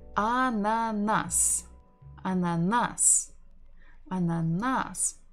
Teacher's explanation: We stress the final syllable.